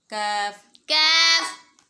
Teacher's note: اوپر کے تالو سے تھوڑا سا ہٹ کر یہ ادا ہوگا باریک کاف